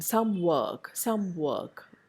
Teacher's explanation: A regressive or anticipatory change at word boundary involving a changed lip position. Mer, again, is lip rounded in some work, some work. Mer by itself is the bilabial sound, which does not involve any lip rounding, but under the influence of the were sound that comes after it, here it becomes some work, a lip rounded change.